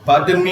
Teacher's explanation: Pardon me with a rising intonation. Pardon with a rising intonation may be informal.